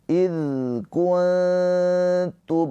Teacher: Ini adalah ikhfa hakiki. Cara bacanya nun sukunnya dibaca dengan samar. Ditahan dua harakat sambil bersiap-siap untuk masuk kepada huruf ta.